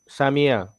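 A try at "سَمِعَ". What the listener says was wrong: মাশাআল্লাহ, সামিআ, বলেন আবার। হ্যাঁ, তাহলে হরকত যখন থাকবে এক টানে উচ্চারণ করব, পুরো টান দেওয়া যাবে না। ভাই কিন্তু প্রথমে অনেকবার টান দিয়ে ফেলছে, সবাই কি বুঝছেন বিষয়টা? সামিআ, সামিআ, সামিআ।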